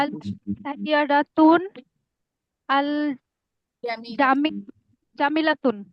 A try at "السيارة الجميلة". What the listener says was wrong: হয়নি, একদম ভুল করে কিন্তু আলিফ না পড়া। আস-সাইয়ারাতুন কেন হয়? আলিফলাম আছে না এখানে? আস-সাইয়ারাতু হবে না, তুন কেন হবে?